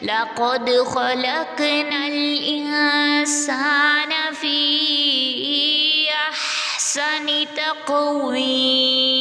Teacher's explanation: یا ساکن سے پہلے جو ہے ہمارے پاس واو کے نیچے زیر ہے، تو یہ ہمارے پاس واو یا مدہ کا قاعدہ ہے، اس کو 2 سیکنڈ تک کھینچ کے پڑھیں گے